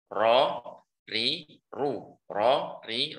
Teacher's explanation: ketahuilah bahwasanya ro ini sifatnya takrir, tapi jangan dibaca getar. Maksudnya jangan dibaca getar terlalu banyak. Karena akan dikhawatirkan akan menjadi dua huruf bahkan lebih, seperti itu maksudnya.